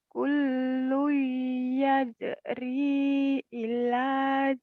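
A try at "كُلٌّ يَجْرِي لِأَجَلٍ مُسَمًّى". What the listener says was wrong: Terbalik. Bukan ila. Li ajalim. Terbalik. Aja pendek. Kullu yajri li ajalim musamma.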